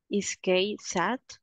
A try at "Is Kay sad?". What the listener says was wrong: Very, very good.